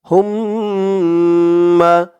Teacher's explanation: হুম হুম বলে গুন্নাহ করতে হবে